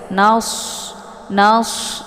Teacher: Kemudian nas ini shad ya, sifatnya adalah shafir. Jadi shafir ini bunyi anginnya itu lebih jelas.